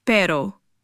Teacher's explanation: This isn't like the English R. It's a soft, quick tap of the tongue against the roof of your mouth, similar to the t sound in the American pronunciation of butter. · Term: single R